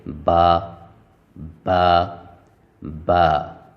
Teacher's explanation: با ادا ہوتا ہے دونوں ہونٹوں کے تری والے حصے کو ملانے سے، جو ہونٹوں کے اندر تری والا حصہ ہوتا ہے اس کو آپس میں ملا کر چھوڑتے ہیں، جیسے با با با۔